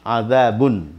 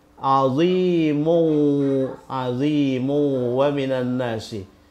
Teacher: Nah, kemudian kalau ini azimun, kalau kita sambungkan dengan redaksi berikutnya, dia dibaca azimu wa minan nasi. Jadi bunyi nun pada double tanwin ini itu diasimilasikan ke waw. Atau dilebur ke waw atau diidghamkan ke waw.